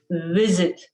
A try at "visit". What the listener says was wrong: Hey, that was pretty okay. Very good. Very good.